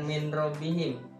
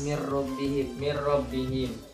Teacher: dimasukkan ro-nya dimasukkan ke huruf nun tanpa berdengung